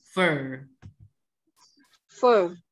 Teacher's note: Kalau ini bacanya er. Tapi agak bergetar er.